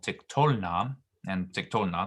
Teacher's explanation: And in the third feminine plural and the second feminine plural, tiktolna and tiktolna, the same, the accent stays the same. The ending na is considered to be light. It doesn't draw the accent to the end. So the accent remains on the tol